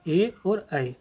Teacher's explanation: कंठ तालव्य यानी कि जो कंठ से भी और तालव्य दोनों से मिलकर बनते हैं वो हमारे होते हैं ए और ऐ।